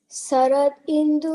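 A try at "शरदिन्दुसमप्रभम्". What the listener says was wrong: it's not Sarad, it's Sharad.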